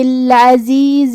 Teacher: زا کی ادائیگی زبان کے نوک اور دونوں دانتوں کے اندرونی کناروں سے ہے